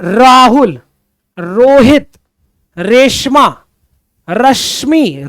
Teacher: र जब जब आप र बोलते हो तो कंपन उत्पन्न होता है। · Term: प्रकंपित व्यंजन